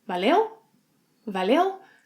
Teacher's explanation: But in our episode, a rising intonation.